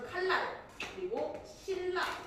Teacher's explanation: 리을의 그 영향이 너무 강해서 니은이 리을을 만나면 리을로 변하는 현상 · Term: 유음화